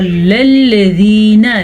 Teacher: وقال الذین، پھر سے قاف کو موٹا پڑھیں گے کیونکہ قاف ہمیشہ ہی موٹا پڑھا جاتا ہے، اور للذین، لام نرمی کے ساتھ پڑھا جاتا ہے، باریک پڑھا جاتا ہے، اس کو پر پڑھنے کی غلطی آپ نے نہیں کرنی.